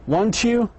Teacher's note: Our voices goes up on the tag if we are not sure about the answers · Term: intonation